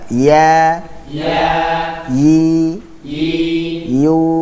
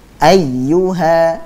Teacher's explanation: Tapi ya yang dimaksud di sini adalah ya yang bukan dari huruf mat. Nah, huruf ya tersebut keluar dengan cara tengah lidah tidak menempel pada langit-langit atas. Jadi tidak menempel, sudah pada posisi langit-langit atas, akan tetapi tidak menempel sehingga makhrajnya pun tidak tertutup, terbuka dia.